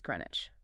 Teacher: the WICH ending is almost entirely swallowed and compressed into an idge sound